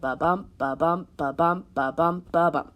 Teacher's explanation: it uses this unstressed, stressed rhythm throughout, and every line has 5 patterns or 5 repetitions of that pattern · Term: iambic pentameter